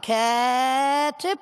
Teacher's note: vorne langes A, hinten kurzes I